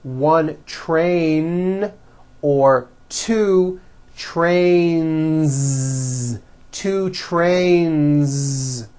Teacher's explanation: two trains with a voiced Z ending